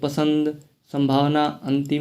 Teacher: नाक से अनुस्वार की आवाज़ निकलती है